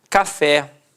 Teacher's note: Repare que a sílaba tônica é a última e é terminada em E.